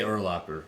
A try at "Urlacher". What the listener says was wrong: Maybe you could say his name right. Urlacher. Urlacher. It's not Locker.